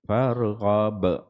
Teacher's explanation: kalau kita berhenti pada ayat 8 tu, farghab, dia ada lantunan dia ada qalqalah dia